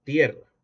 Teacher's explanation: Diptongación de la vocal semicerrada anterior, breve tónica.